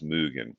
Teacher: this O with an umlaut, right, for können und mögen, is like the A sound, but with rounded lips. So right, like A, right, your tongue's in the front, but in the middle of your mouth, and then you just round your lips from A, right? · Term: O with an umlout